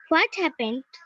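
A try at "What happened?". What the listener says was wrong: হোয়াট না baby, হোয়াট। হোয়াট, হোয়াট না, হ এর উচ্চারণ করা যাবে না। হোয়াট, ও, ও অন্তস্থয় আকার ঠ। Yes, হোয়াট হ্যাপেন্ড,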